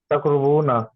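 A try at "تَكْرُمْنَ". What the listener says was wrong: तक रुमना, रुमना मीम।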